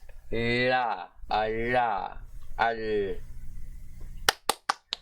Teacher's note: Alright, now we have L with the curl, which means it's the voiced alveolo-palatal lateral or proximant consonant.